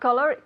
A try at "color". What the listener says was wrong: Color, no cola. Hay que bajar un poquito la mandíbula.